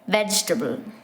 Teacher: So you have to skip the I sound and think of it as vegetable in three syllables